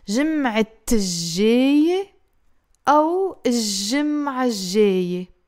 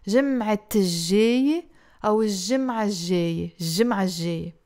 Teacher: Or if you put the L, you're saying الجمعة without pronouncing the T مربوطة.